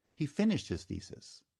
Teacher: So now accent shifts to he finished his thesis. And again, finished is a two-syllable word. Stress is on the first syllable. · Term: sentence accent